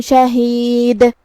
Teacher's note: کلمت شہید میں آخری میں ہم دال پہ رکیں گے تو ہم اس پہ جزم سے رکیں گے تو دال کا حکم ہے قلقلہ. ہمیں اسے ہلاتے ہوئے یہ کلمہ کو ادا کرنا ہے